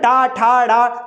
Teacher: जीभ तालू से आगे लग रही होगी और दांतों से ठीक पीछे होगी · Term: मूर्धन्य